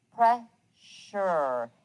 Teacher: it almost sounds like an sh but notice there is no sh in the word pressure